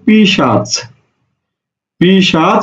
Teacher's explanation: পিশাচ এই পিশাচ থেকে হয়ে গেছে কি পি চাষ পিচাস অর্থাৎ স টা আগে ছিল চ টা পরে ছিল চ টা আগে চলে আসছে স টা পরে গেছে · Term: স্থান পরিবর্তন